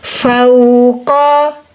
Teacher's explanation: Waw sukun bunyinya u. Di huruf waw ada sifat rohwah, mengalir suara. Suara dialirkan, suara u.